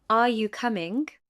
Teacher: The pitch rises at the end of the sentence. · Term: Rising intonation